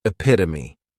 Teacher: this noun has four syllables and the stress is on that second syllable. Epitome. This is a word that when you see it, many times people may mispronounce it because the third syllable has that schwah and the last syllable is that long e pit omi.